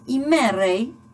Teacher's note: la ro se encontró a la iot y geminó, es decir, se duplicó. En vez de que la iot vocalice en iota y entre el tema, como se da en jimeirei.